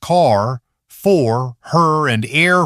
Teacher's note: the sound starts as a vowel, and curls toward R at the end. These are R colored vowels.